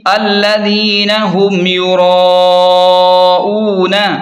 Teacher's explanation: میم ساکن پر غنہ نہیں ہوگا کیونکہ یہاں اظہار شفوی ہوگا